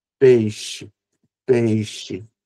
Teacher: geralmente a pronúncia do brasileiro final é trocar esse som de o por u e trocar o som de e por i